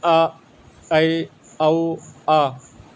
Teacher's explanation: जिन स्वरों के उच्चारण में मुख द्वार आधा खुलता है यानी हा पोफन यानी आधा खुलता है जैसे अ ऐ औ आ तो ये अर्ध विवृत स्वर कहलाते हैं।